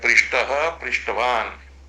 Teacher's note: इसी तरह से प्रसिद्ध शब्दों में उसी प्रच्छ धातु का च और छ त प्रत्यय रूपी जलादि कित के पर में रहते भी श आदेश कर देता है इस सूत्र से। पृष्ठ, श को मूर्धन्य और त को ट होकर के शब्द बनता है